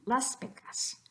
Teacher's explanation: So what do we do with that S before pecas? We keep it unvoiced, just like the P that comes after it. So las pecas, just like you thought it would be, las pecas.